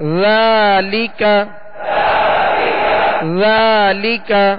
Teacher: ذال کو نرمی کے ساتھ ادا کرنا ہے، اس میں بالکل سیٹی کی آواز پیدا نہ ہو. اور ذال پر کھڑا زبر ہے جو الف مدہ کے قائم مقام ہے، جسے ایک الف یعنی 2 حرکت کے برابر کھینچ کر ادا کریں گے. لام کے نیچے زیر ہے اور بغیر کھینچے بغیر جھٹکا دیے معروف پڑھیں گے.